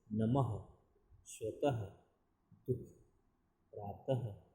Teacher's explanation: जब इसका उच्चारण करते हैं तो ख की ध्वनि निकलती है बाद में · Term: विसर्ग